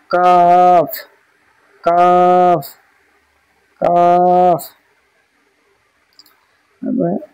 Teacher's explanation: হচ্ছে কফ, কফের মাখরাজ হচ্ছে জিভের গোড়া, জিভের গোড়া এবং তার বরাবর উপরের তালুর সাথে লাগিয়ে উচ্চারিত হয় কফ, কফ। কাফ, কাফের মাখরাজ হচ্ছে জিভের গোড়া হতে একটু আগে বাড়িয়ে, জিভের গোড়া হতে একটু আগে বাড়িয়ে তার বরাবর উপরের তালুর সাথে লাগিয়ে উচ্চারিত হয় মধ্যখান পেঁচানো কাফ, কাফ, কাফ।